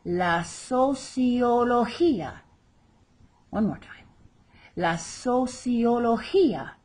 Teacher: Again, there's that accent over the final I where we stress the word.